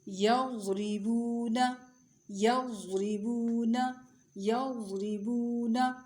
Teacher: ضاد کی آواز بہت موٹی اور نرم ہوتی ہے اور جماؤں سے نکلتی ہے.